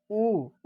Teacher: जब बोलेंगे तो आपका जो ओठ है वह गोल हो जाएगा